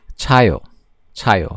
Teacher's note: it's just more air is coming out so it's a very voiceless sound child child child means to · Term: aspirated counterpart